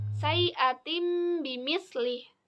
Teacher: Nah, di situ itu ada kasrotain yang bertemu dengan ba. Jadi tanwinnya diganti menjadi mim. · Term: iklab